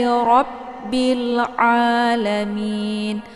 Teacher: Ra dibaca tebal karena dia adalah posisinya harkatnya fathah ya.